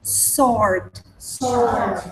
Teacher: You don't pronounce the W, okay?